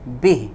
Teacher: جیسے اگر ہم یوں پڑھیں بی ہی ملا کے تو پھر 1 الف لمبا کریں گے، اور اگر ہم اس پہ وقف کر دیں تو پھر ہم ہا کو ساکن کریں گے